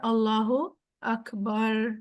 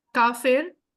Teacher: را موٹا ہو کے نکلے گا، تھوڑا سا ڈیپ بن جائے گا را